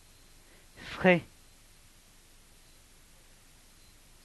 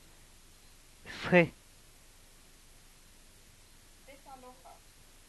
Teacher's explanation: We're now looking at fricative followed by breathy vowel.